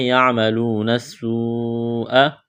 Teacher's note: واو مدہ ہے، ایک الف کے برابر کھینچنا ہے، نون کو سین کے ساتھ ملائیں گے ، یہ لمبی مد ہے، 4 الف کے برابر کھینچنا ہے،